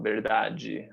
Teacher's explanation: você sempre vai pronunciar muito forte esse E ao final